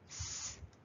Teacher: Unvoiced consonant s as in sun.